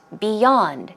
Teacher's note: the stress goes on the second syllable.